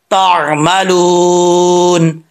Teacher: آگے عین جو ہے اس کو کلیئر کرنا ہے آپ نے، عین کو حمزہ نہیں پڑھنا